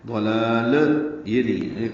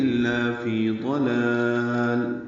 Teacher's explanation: لام کے اوپر جس پر کھڑا زبر ہے اس کو لمبا کریں گے اور دوسرے لام پر آواز روک لیں گے. ضلال یہ نہیں ہے، قلقلہ نہ ہو، لام ہلے نہیں، لام کے اوپر سکون ہونا چاہیے. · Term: وقفاً اظہار